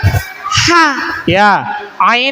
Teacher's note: Ain sama ha ya itu tenggorokan bagian tengah